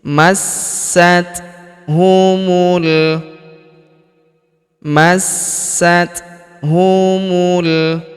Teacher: Kita tahan dan kita tekan masat. Huruf ta berharakat sukun. Kita berikan hembusan tipis.